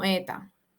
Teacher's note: También está la eliminación de la S. Y este fenómeno de manera específica ocurre cuando la S está al final de la sílaba o al final de la palabra.